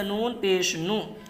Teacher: نون کے اوپر جو پیش ہے یہ حرکت کا ہے، اس لیے اس کو تھوڑا بھی نہ کھینچیں، معروف پڑھیں، مجہول آواز سے بچیں